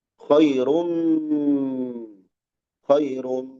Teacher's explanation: Ada tanwin menghadapi mim. Berlaku namanya idgham bi gunnah.